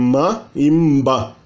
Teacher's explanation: O M também, ele pode variar entre ma e mba.